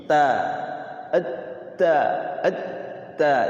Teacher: Kalau ta itu ee di ujung lidah nyentuh gigi